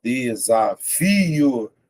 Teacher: Veja que o fi é a sílaba mais forte.